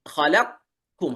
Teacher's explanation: لكن الإدغام الناقص تقول خلق، كأنك تريد أن تنطق قافا لكنك تخرجها كاف، فأنت تبدأ بالقاف وتخرج كاف. خلقكم هذا الناقص.